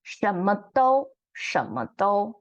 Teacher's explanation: So in Taiwan, we pronounce this phrase more like the 舌, third tone instead of second tone.